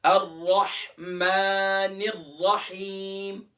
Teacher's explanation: الرحمن میں بھی جو میم کے اوپر کھڑی زبر ہے، اسے بھی کیونکہ ورٹیکل حرکہ ہے، کھڑی زبر ہے، اسے بھی ایک الف کی مقدار کھینچنا ہے · اب ہا کے بعد جو یا مدہ ہے، اسے الف کی مقدار کھینچنا ہے